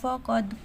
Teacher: اوپر زبر ہے، اور بریک پڑھیں گے، قاف موٹا پڑھیں گے، دال حروف قلقلہ میں سے دال کی آواز پلٹ کے آئے گی